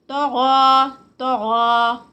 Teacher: طا heavy, غین heavy, اور پھر دونوں میں 2 کاؤنٹس